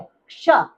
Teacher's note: अभी कुछ वर्ण ऐसे भी हैं जिनमें 2 वर्णों की आवाज आती है, क्ष। इसमें क और श की आवाज आ रही है, क्ष, ठीक है।